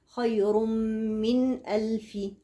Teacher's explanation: السكون دلال على ايه على حكم الاظهار جاي وراها ايه همزه الهمزه من حروف الحلق الحروف السته اللي النون بتظهر عندهم تظهر يعني تنطق بدون غنه زائده